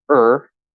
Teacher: or is the full pronunciation but it commonly gets reduced to er